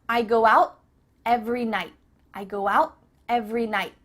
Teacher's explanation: your tongue is at the top of your mouth you're about to make the t sound but no air goes through so it's just stopped at the top of your mouth i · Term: cut off the t